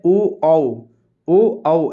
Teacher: कंठ और ओठ स्वर के माध्यम से बोला जाने वाला, इसको कहते हैं कंठ ओष्ठीय स्वर।